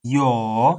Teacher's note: it has a falling and rising tone